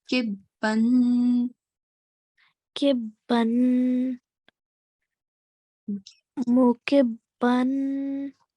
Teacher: Okay, what we have to do is we have to hold the nasal sound. Okay, we have to make a nasal sound and we have to sustain it for a bit.